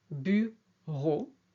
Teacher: French prefers, generally, a steady vowel, bureau. The hiatus, océan, that's when the two are separate, et en.